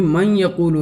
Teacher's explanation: من یقولو میں نون جو ہے بعد والے حرف میں داخل ہو کر کے بھی اپنی صفت غنہ کو باقی رکھتا ہے ، اس وجہ سے اس کو ادغام بالغنہ کہا جاتا ہے،